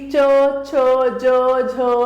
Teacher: तालव्य यानी कठोर तालु से